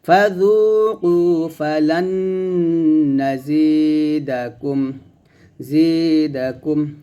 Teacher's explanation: জের পর ইয়া সেকেন্ড এক লিফ টান দিবেন। ফাজুকু ফালান নাজিদাকুম, জিদাকুম।